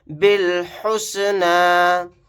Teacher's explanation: با کو ڈائریکٹ لام کے ساتھ ملائیں گے، جو با کے ساتھ الف ہے نہیں پڑھا جائے گا، لاسٹ میں یا بھی نہیں پڑھا جائے گا۔